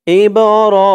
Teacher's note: ইবরাহিমা, ইব, হামজা দিয়ে বা ধরবে, হামজা বাজের ইব, এই বাটা হচ্ছে কলকলার হরফ, ধাক্কা দিয়ে পড়তে হবে। ইব র, খারা জবর এক আলিফ টান।